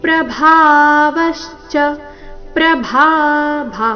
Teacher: ಪ್ರಭಾ ಭಾ ಮಹಾಪ್ರಾಣ ದೀರ್ಘ